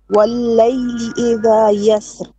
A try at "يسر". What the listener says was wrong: you, so sorry, you've said this with light. You said the raw light here. Do you know this is light or heavy? Yeah, but you actually said it correctly the first time, but you did not know why. But now you change it to heavy.